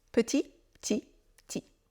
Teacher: petit ça peut se prononcer petit et parfois ça se prononce même ti · C'est une toute petite différence, mais si vous n'entendez pas le P de petit, petit devient ti.